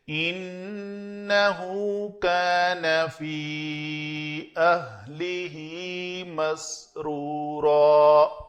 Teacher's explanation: فی کے اوپر مد نہیں بھی تھی تو مجھے پتا ہے کہ یہ محل مد ہے اور اس کے بعد حمزہ آ گیا، یہ سبب مد ہے تو یہاں پہ مد کرنی ہے۔